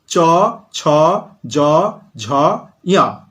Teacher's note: যে সকল ব্যঞ্জন ধ্বনি উচ্চারণের সময় জিহ্বার মধ্যভাগ তালুকে স্পর্শ করে, আমাদের মুখবিবরের উপরের যে অংশটা অনেকে টাগরা বলে, সেটা হচ্ছে তালু, ব্যাকরণের ভাষায় তালু। তাহলে যে সকল ব্যঞ্জন ধ্বনি উচ্চারণের সময় জিহ্বা তালুকে স্পর্শ করে তাদেরকে বলা হয় তালব্য ব্যঞ্জন ধ্বনি।